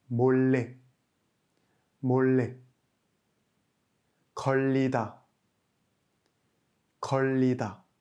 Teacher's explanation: Lorsque le liul se trouve en fin de syllabe et de nouveau en début de syllabe suivante, nous avons un son L appuyé.